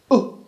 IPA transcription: ʊ